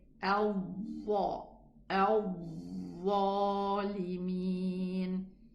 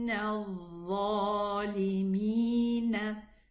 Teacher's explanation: it's the wrong al-Dha, closing the lips and blowing the cheeks · The Makhraj is just the tip of the tongue with the edges of the upper 2 teeth. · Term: Dhal